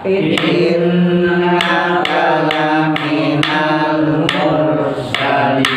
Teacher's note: Karena jatuh setelah rokat domah, mur tebal.